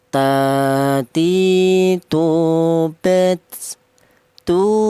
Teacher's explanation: Huruf ta. Huruf ta ini keluarnya huruf berasal dari ujung lidah menyentuh pangkal gigi seri atas.